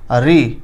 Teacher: री जब बोलते हैं तो जीभ का आगे वाला भाग ऊपर जाके लड़ता है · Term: मूर्धन